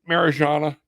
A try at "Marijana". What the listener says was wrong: It's a Mariana. Yeah, Anna. It's silent. The J is silent. So Mariana.